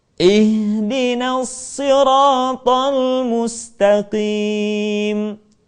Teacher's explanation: Dan yang ketiga, hamzah wasal dibaca dengan harakat kasrah manakala tidak ada unsur pertama yaitu lam dan unsur yang kedua yaitu huruf yang pertamanya bukanlah u. Maka kemudian hamzah wasal dibaca dengan harakat i.